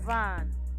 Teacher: a voiced labial dental fricative and it is pronounced by pressing the lower lip against the